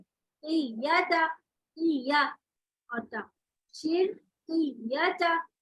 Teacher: क़ाफ के बाद या को पढ़ते ही फौरन नबर करें